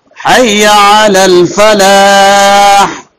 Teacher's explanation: اس کے اندر بھی آخر میں بڑی ہا ہے، تو بڑی ہا جو جہاں اس کا مخرج ہے حلق سے وہاں سے نکلنی چاہیے